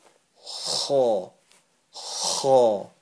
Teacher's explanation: If you push it a little bit, you'll hear the kind of a gargle sensation.